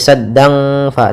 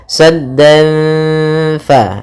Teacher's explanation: Kita tahan gunnahnya sambil kita samarkan suara tanwinnya kepada huruf fa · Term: ikhfa hakiki